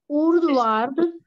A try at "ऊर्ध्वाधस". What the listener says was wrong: नहीं, ऊर्ध्वार्ध नहीं, ऊर्ध्वाधस। ऊर्ध्व अधः है ना, ऊर्ध्व अधः। अधः का फिर वो विसर्ग का आधा से बन गया है। ऊर्ध्व अधः तो ऊर्ध्व अधः तो व में आकी मात्रा बन गई ऊर्ध्वा ध और विसर्ग का आधा से बन गया ऊर्ध्वाधस और तिर्यक।